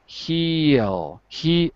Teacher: Because there's an L, and it's just a natural diphthong, meaning two sounds, because of the L.